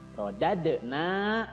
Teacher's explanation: na-nya mad tabi'i, panjangnya 2 harokat, dibaca panjang